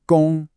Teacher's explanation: Gong is the first tone. You hold it high and flat.